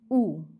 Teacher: ऊ का उच्चारण जीभ के पीछे भाग से होता है, इसलिए स्पष्ट स्वर। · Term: पश्च स्वर